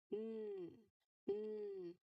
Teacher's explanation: this is a voiced sound. So your throat must vibrate.